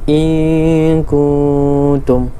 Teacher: Nun mati bertemu dengan kaf ikhfa hakiki. Jadi kita tak bunyi in, lidah tak sentuh di langit.